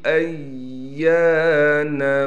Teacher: حمزہ کو یا سے ملائیں گے، یا پر تشدید ہونے کی وجہ سے ٹھہراؤ بھی کیا جائے گا، اور یا کے بعد الف نظر آ رہی ہے، اس کو کھینچنا ہے، یا کو ایک الف کی مقدار کھینچیں گے۔